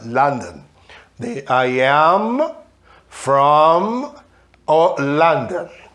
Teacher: London é a pronúncia dos americanos, falar esse O e esse O-N com som de an.